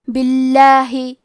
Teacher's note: کلمت باللہ حرف الباء کے نیچے زیر ہے، لہذا لفظ الجلالہ کے لام کا حکم ہے ترقیق، تو ہم حرف اللام کو پتلی آواز میں پڑھیں گے